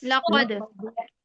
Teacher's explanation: लक़द में काफ को मोटा पढ़ेंगे